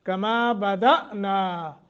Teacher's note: کما بدأنا، حمزہ جھٹکے کے ساتھ، کیونکہ حمزے کے اوپر وہ جزم ہے، نا کو لمبا کریں گے، مد منفصل ہے۔ اول خلق نعید، اول خا کو موٹا، قاف کو موٹا، لیکن غنہ بھی کریں گے، نون مشدد ہے، خلق نعید کر کے پڑھیں گے، نعید۔